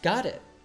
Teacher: connects the word got and it as if they were just one word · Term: American T